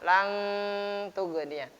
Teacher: Nun mati berjumpa dengan ta dibaca ikhfa.